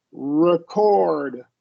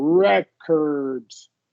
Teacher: make sure we're stressing the first syllable